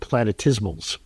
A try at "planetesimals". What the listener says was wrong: Don't they call it planetesimals? Well, you said planetismals. Yours rhymes with dismal. I like planetesimal. Or decimal. No, yeah, tesimal. Planetesimals. Planetesimals.